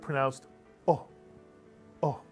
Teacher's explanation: when Israelis pronounce the cholam, it's really a shorter O than the English O. It's sort of pronounced O, O.